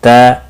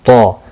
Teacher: پہلا تا باریک ہے، دوسرا طا موٹا ہے